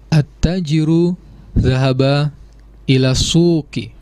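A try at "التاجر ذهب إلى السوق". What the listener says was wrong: Iya, betul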